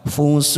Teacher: Rafatha wala, wala lam alif kita baca 2 harokat. Fusuq, fusuq kita panjangkan 4 harokat atau 4 ketuk karena kita memilih wakaf di situ. Lalu belakangnya kita pantulkan, namanya qalqalah kubra karena kita memilih wakaf di situ.